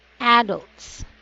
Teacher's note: there's a stress on the first syllable